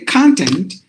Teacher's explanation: content but this word is actually divided into two syllables so if you stress at the beginning then it is a noun